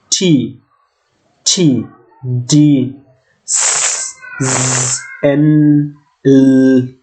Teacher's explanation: আমরা দেখতেই পাচ্ছি যে জিহ্বার আগাটা গিয়ে উপরের দাঁতের মাড়ির একটু পিছনে লাগছে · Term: এলভিওলার